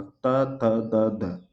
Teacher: ठीक है, जीभ भी लगेगी वहां जा करके। दंत मूल मसूड़े में लगेगी त वर्ग में,